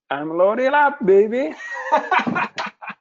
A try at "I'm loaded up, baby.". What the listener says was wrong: Perfect. Great job.